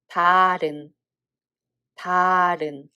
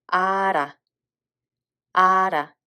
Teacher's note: Hieut becomes a mute and ㄹ sound carries over.